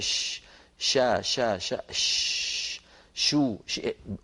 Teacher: شو ويقلب الحرف فتحا وضما وكسرا وسكونا ويتامل مكان خروجه ثم يكتب الشين من وسط اللسان · يكتب الشين من وسط اللسان، يكتب الخاء من أدنى الحلق